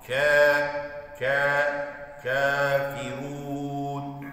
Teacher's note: Kef de incedir. Ama yine uzatma olduğu için, met olduğu için ka, ka şeklinde yapıyor.